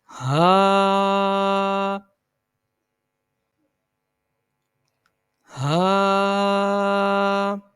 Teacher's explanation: یہ حلق کے نچلے حصے سے ادا کیا جاتا ہے. حلق کے نچلا حصہ یعنی جو سینے کے قریب تر ہوتا ہے اس کی ادائیگی وہاں سے ہوتی ہے.